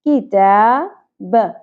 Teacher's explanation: تا کے اوپر کھڑی زبر 1 الف کے برابر کھینچیں گے